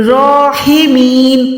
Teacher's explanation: راحمین، یہ بھی ہا حلق کے درمیان سے ہے، راحمین، میم یا زیر می، یا مدہ ہے، اس کو 1 سیکنڈ کھینچ کے پڑھیں گے، اور جب بھی ہم وقف کرتے ہیں تو نون ساکن ہو جاتا ہے، زبر ساکن ہو جاتی ہے، تو یہاں پر راحمین نہیں پڑھیں گے، کیونکہ یہاں پر آیت کمپلیٹ ہو رہی ہے، تو اس کو ہم پڑھیں گے راحمین۔